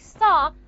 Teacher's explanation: In a word just like star, I'm not going to aspirate the ta because it's preceded by the sound sa.